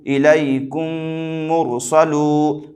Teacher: مدہ ہوگا اس لیے کہ واو ساکن سے پہلے پیش ہے، واو مدہ کو ایک الف کے برابر کھینچ کر پڑھیں، معروف پڑھیں، مجہول آواز سے بچیں